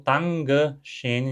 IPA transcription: taŋgə ʃeːn